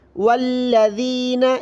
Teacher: ذال کو زبان کی نوک باہر نکال کر پڑھنا ہے ، یؤمنون، والذین یؤمنون بما، یہاں پر دیکھیں میم پر مد